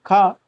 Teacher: खा का जो उच्चारण स्थान है वह कंठ है